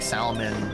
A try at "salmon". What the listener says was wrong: You need to not say the L in salmon.